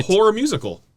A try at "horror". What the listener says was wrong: make sure you say all the syllables cuz then it's completely different film